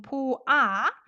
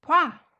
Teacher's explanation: Instead of saying 보아, we combine it and say 봐. Not 보아, 봐. 봐요.